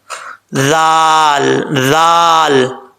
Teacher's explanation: تو یہ پڑھتے وقت آپ نے ذال میں بغیر سیٹی کے پڑھنا ہے، ذال کو سیٹی نہیں آنی چاہیے، ذال، ٹھیک ہے۔